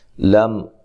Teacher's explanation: میم ساکن کا اظہار ہے، میم کو ہلانا نہیں ہے